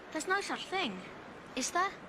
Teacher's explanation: a default rise is also employed in an open tag